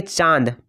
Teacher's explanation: अगर हम बोलेंगे चांद, ठीक है, इससे भी आपका जो उच्चारण कर रहे हैं, चांद को उच्चारण कर रहे हैं, तो आपका जो मतलब हवा है वो मुंह और नाक दोनों से निकल रहा है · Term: चंद्र बिंदु